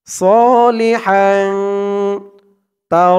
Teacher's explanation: হাং গুন্না হবে ইকফা গুন্না , তানবিনের পরে ইকফার হরফ তা আসছে। সলিহাং তা র জবর